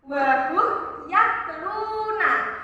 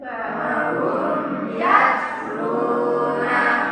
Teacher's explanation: mim sukun bertemu dengan huruf selain mim dan ba, yaitu huruf ya. Jadi dibacanya jelas satu ketukan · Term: idhar syafawi